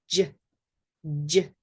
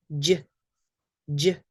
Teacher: The J sound is quite different because the tongue is going to touch right behind the upper teeth.